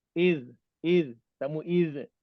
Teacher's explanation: Jangan tarik lidah. Bila tarik lidah dia akan jadi qalqalah.